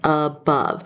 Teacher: So, that O is saying the H sound. And then we have this a at the beginning that's actually turned into a schwa sound above. So you might sound it out and say above.